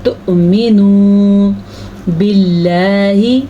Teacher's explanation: اللہ کا نام باریک پڑھنا ہے کیونکہ اللہ کے نام سے پہلے حرف کے نیچے زیر ہے